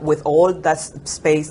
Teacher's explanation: the o sound perseveres into the word all as owl